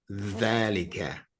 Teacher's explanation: it's kind of the sound that you would make if your two front teeth were missing